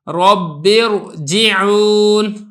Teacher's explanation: آپ نے را کو پر کر کے پڑھنا ہے۔ نمبر 8 را ساکن ہو اس سے پہلے کسرہ دوسرے کلمے کے اندر ہوگا تو تب بھی آپ نے را کو پر کر کے پڑھنا ہے